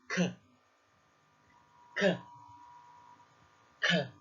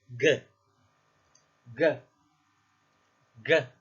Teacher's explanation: The back of the mouth interacts with the soft palate to create the sound of K, the sound of G, and the sound of NG.